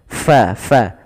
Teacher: fa alirkan nafasnya, fa, jangan dibaca pa.